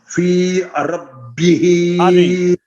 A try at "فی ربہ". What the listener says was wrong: نہیں الف نہیں ہے درمیان میں نا. فی ربہ، نہیں آپ پتہ کیسے پڑھ رہے ہیں؟